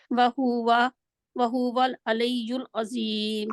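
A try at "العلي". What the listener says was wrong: अलैयुल क्यों है, आप मद लीन के पढ़े हैं, लई को, लई तो नहीं, लीयू है। वहुवल अलीयुल,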